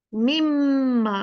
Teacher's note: मिम्मा, मीन नून ऐसे मर्ज हो जाएगा जैसे था ही नहीं। मीम, मीम और मीम के बीच में नून साकिन ऐसे हो गया है जैसे था ही नहीं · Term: इदगाम